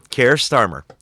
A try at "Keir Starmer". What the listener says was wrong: To my ears, listening to you say it, it sounded like one word. One word.